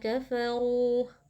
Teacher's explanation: Ro dibaca tafkhim atau tebal karena ro-nya berharokat dhammah, kemudian dipanjangkan 2 harokat karena di sini ada mad tabi'i.